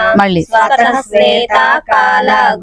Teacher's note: స్వతః శ్వేతా కాల అని విసర్గలు పూర్తిగా చదవాలి